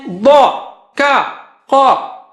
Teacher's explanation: ضا موٹا اونچا ہے, کا نیچے ہے, اور قاف اونچا ہے